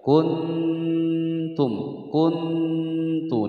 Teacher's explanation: Nun yang menyandang harokat sukun bertemu dengan huruf Ta ini adalah bacaan Ikhfa cara membacanya disamarkan dan didengungkan selama dua ketukan